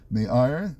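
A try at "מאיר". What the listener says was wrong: Meyer. Meyer. They don't say Meir, they say Meyer.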